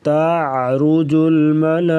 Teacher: ملائکہ پہ مد کریں گے، مد متصل